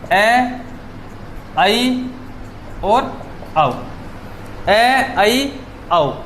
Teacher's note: ए, आई, औ स्वर ऐसे हैं जिनका उच्चारण करते समय मुख्य गुहा का जो द्वार है वो आ की अपेक्षा थोड़ा सा कम खुलता है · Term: अर्धविवर्त